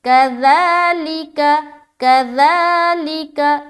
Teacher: تو یہاں پر ذال میں سیٹی کی آواز نہیں آنی چاہیے